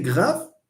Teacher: The r in grave, it's voiced. It's a real r. But when you say prêt in French, it's a r sound.